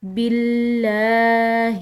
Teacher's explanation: لفظ اللہ کی لام ہم نے باریک ادا کرنی ہے